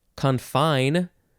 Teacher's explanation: gotta emphasize the second syllable